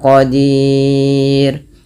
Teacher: Nah, kemudian yang terakhir ada huruf ro. Ro-nya di sini dibaca dengan tipis, tidak dibaca dengan tebal.